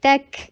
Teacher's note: تا سختی کے ساتھ ادا کر کے کاف کے اوپر ہمس کیجیے اور کاف کو لائٹ رکھیے